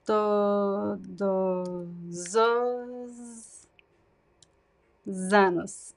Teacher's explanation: We add like two Z sounds, basically, to make this connection. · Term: connections